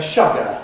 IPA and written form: ˈʃʌgə (sugar)